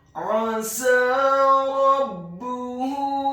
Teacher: huruf A-nya ditekankan keluar dari tenggorokan bagian tengah fathah 1 harokat · Huruf Sin-nya dibaca fathah 2 harokat karena harokatnya tegak, dan setelahnya seperti ada huruf ya sukun yang fungsinya menambahkan 1 harokat.